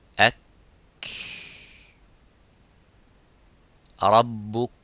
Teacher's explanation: But the kaf, there is some air coming. It doesn't stop slightly, but it makes that rakhawa, it makes the, it makes that hams in the kaf.